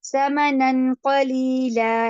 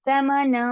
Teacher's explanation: نن جب ہم پڑھتے ہیں نن ثمنن تو ہماری زبان اوپر ٹچ ہوتی ہے, لیکن جب ہم نے دیکھا ثمنن کے بعد قاف آ رہا ہے تو ہم کیا کریں گے, زبان کو ٹچ نہیں ہونے دیں گے, ہم پڑھیں گے ثمنا, نون کی آواز کو ناک میں روک لیں گے.